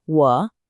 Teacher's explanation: It's a falling, rising tone. Feel your voice dip down and come back up. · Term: third tone